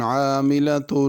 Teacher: عاملہ میں عین ہے، اس کو حمزہ یا الف عاملہ نہ پڑھا جائے